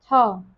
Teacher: थ महाप्राण है, अघोष भी है और दंत्य व्यंजन भी है